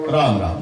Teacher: रा म्हणताना तोंड उघडल्या जात म म्हणताना बंद होत